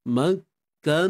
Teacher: kena panjangkanlah na ni dua harakat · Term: mad asli